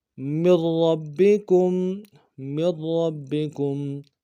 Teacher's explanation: را کے اوپر تشدید ہے، را کا پہلا حرف ساکن ہے، دو را ہے، دوسرا متحرک ہے، تو را کو موٹا ادا کریں گے · تو را کو موٹا ادا کریں گے، دوسرا را کو موٹا ادا کریں گے، تشدید میں زور دیں گے، اور دوسرا را کو آگے با کے ساتھ ملانا ہے، با کے اوپر تشدید زور دیں گے، کاف کو میم ساکن کے ساتھ ملانا ہے، میم ساکن میں غنہ کریں گے۔